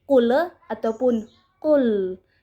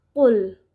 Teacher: huruf lam tidak termaksud ke dalam huruf qalqalah. Jadi cara membacanya tidak boleh dimantulkan ataupun ditahan